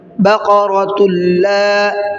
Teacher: تنوین کے بعد میں جب لام آتا ہے تو وہاں پر غنہ کچھ نہیں کرتے ہیں